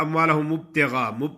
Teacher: اموالہ جو لوگ غلط پڑھتے ہیں وہ کہتے ہیں اموالہ مبتغا، ہونٹ بند ہو جاتے ہیں تو دوبارہ جدا نہیں ہوتے، با پہ قلقلہ ادا نہیں ہوتا